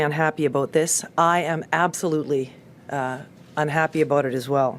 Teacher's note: words that they pronounced differently and it's called the Canadian raising the canadian raising is when they put their tongue higher in their mouth